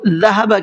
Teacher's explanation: ذہب کے اندر ذال کو نرم اور سافٹ کر کے پڑھنا ہے, زا نہیں پڑھنا ہے. زا پروننسیشن زا کا ہے, اس کا اگر ذہبہ پڑھیں گے تو اس کا بھی مطلب اور میننگ بدل جائے گا.